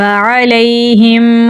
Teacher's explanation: عین کو گلے کے درمیان والے حصے سے نکالیں گے۔